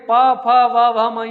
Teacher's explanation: ओष्ठ word है। ये ओष्ठ के द्वारा स्पर्श उच्चारित होते हैं।